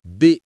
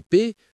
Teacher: B et P sont proches, mais la vibration de la voix change tout.